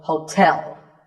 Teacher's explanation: The stress is on the second syllable, so hotel. A related word is suite.